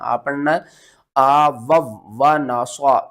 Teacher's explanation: आ वव, आ वाउ आपने नहीं करना, आ पढ़ना है आ वव व ना स्वा। स्वाद को आपने मोटा पढ़ना है